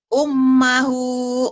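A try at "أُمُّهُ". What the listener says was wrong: Ummuhu atuh. Kan ini domah.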